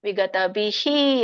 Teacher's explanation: ಹಿಂದಿನ ಒಂದು ವ್ಯಂಜನಕ್ಕೆ ಇರುವಂತಹ ಸ್ವರ ಈ ಇದೆ ಹಾಗಾಗಿ ವಿಸರ್ಗ ವಿಸರ್ಗ ಕೂಡ ಹಿ ಅಂತ ಹೇಳಬೇಕು